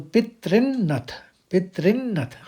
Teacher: जो री का स्वर है वही निकलेगा और दीर्घ निकलेगा इसमें। ये छोटा नहीं है बल्कि बड़ा है ये।